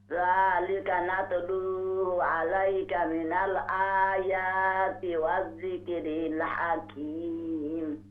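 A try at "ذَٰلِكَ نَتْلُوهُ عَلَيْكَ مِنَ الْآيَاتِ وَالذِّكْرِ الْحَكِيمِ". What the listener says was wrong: माशाल्लाह जी।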